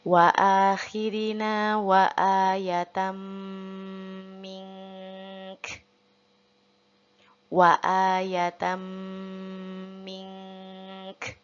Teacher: dengungnya tetap kita baca 3 harokat dulu, tahan, lalu kafnya kita hamaskan